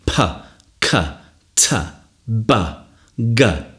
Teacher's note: Think of them as being explosive. They're the sounds where you stop the sound and you release it suddenly. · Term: plosives